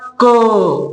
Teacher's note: एकदा क म्हणल्यानंतर त्याच्यातून अचा स्वर हा बाहेर पडत आहे